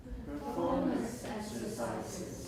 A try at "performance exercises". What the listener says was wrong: If you say performance exercises, 还是太高, then you're not using compound stress. Listen again, use the echo, and kind of use your chin to help you, just like my American classmate who 讲中文也用头来画出声符. You can do it a little. You lower your chin a little bit.